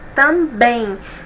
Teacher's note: A última sílaba que é a mais forte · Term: oxítona